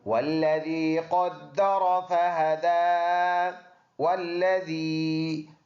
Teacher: اگلا آیات ہے والذی قدر فہدی، والذی، ذال نرم، واو اور لام دونوں کو ملا کے پڑھیں گے، لام کے اوپر شد ہے تو جماع کے ساتھ، یا مدہ ہے۔